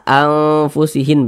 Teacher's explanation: maka cara membacanya itu disamarkan kemudian didengungkan karena dia ausat maka kadar sana kadar samar dengan kadar dengungnya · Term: ikhfa Hakiki ausat